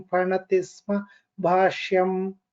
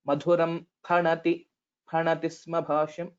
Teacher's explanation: So only difference was pha. It's a mahaprana.